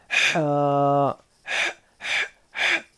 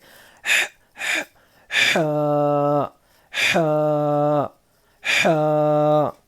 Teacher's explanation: اب یہ حا زبان کے حلق کے بیچ کے حصے سے، حلق کے بیچ کے حصے سے یہ حا ادا ہوتا ہے. اور اس کو پرناؤن کرتے وقت منہ سے ایک ہلکی سی ہوا باہر جاتی ہے، خارج ہوتی ہے ہلکی سی ہوا، اور ہمارے حلق پر تھوڑا دباؤ ڈالنا ہے